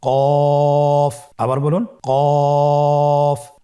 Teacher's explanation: কফের মাখরাজ হলো জিহ্বার গোড়া তার বরাবর উপরে তালুর সঙ্গে লাগিয়ে উচ্চারিত হয়।